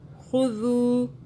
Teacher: دال کو سافٹ پڑا، زبان کو باہر کیجئے